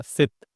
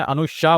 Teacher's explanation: उसके बाद यह वाला श इसीलिए मैंने बोला था अनुशा उसके बाद सित बोला था। यानी कि जब मैंने सित बोला तब मेरा जीभ फ्लैट था। मतलब मेरा जीभ जो है वो नीचे के दांत से सट रहा था। सित लेकिन जब मैंने अनुशा बोला श तो मेरा नीचे के दांत से जीभ नहीं सट रहा था।